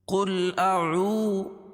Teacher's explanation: واو ساکن سے پہلے پیش ہو تو واو مدہ، اس کو ایک الف کے برابر کھینچ کے پڑھیں گے، دال کے اوپر پیش ہے، اس کو جلدی پڑھیں گے۔